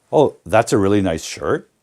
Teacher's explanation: even with grammatical statements they lift the tone at the end and turn it into a question